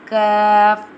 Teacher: Kaf pronounced from the root of the tongue touching the hard part of the palate, top of the mouth,